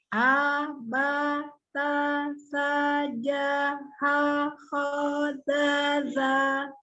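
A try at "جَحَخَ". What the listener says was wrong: Nah, coba jahakho harusnya mengecil apa tidak? Oh, tidak, kho-nya lebih tebal, tetap dibuka.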